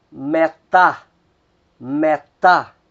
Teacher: Então a que vai soar, a sílaba que soa mais forte é a última, é a tá